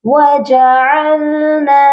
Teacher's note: جب بھی الف سے پہلے زبر ہو تو وہ الف مدہ ہوتا ہے، اور اس کو ایک الف کے برابر لمبا کر کے پڑھا جاتا ہے. نون کو ہم ایک الف کے برابر لمبا کر کے پڑھیں گے.